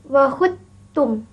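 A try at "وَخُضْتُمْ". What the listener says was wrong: Tebalkan bunyi dal.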